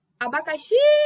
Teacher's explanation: O xi, reparem que o xi foi a que mais, né, teve uma tonicidade maior. Abacaxi! Ela ficou por mais tempo, né, quando eu chamei. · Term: sílaba tônica